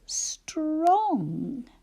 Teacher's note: that sound where our tongue is right at the top of our mouth is N-G